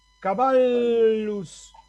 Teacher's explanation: La doble L, que es la que va a aparecer en el ejemplo que puse yo, se lee dos L's una atrás de la otra, no se lee como ye o como yi. Ahí no voy a leer caballos o caballos, sino caballus, dos L's, una seguida de la otra, caballus.